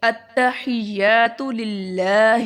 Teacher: لام اللہ والا لام جو ہے یہ موٹا نہیں پڑھیں گے، ٹھیک ہے، کیونکہ لام سے پہلے زیر ہے۔